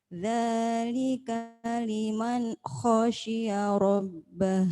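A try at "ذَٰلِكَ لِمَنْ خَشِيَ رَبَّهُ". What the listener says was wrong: Coba liman ke kho itu jangan diputus. Dzalika liman kho jangan liman kho. Dzalika liman khasyiya rabbah.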